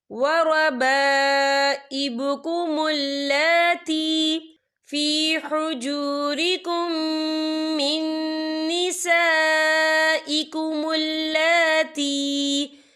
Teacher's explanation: یہ مد جو ہے مد متصل ہے، اس کی مقدار 4 حرکت کی برابر ہے، تو ہم اسے 4 حرکت کے برابر کھینچ کے پڑھیں گے